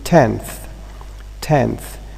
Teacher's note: the N is dentalized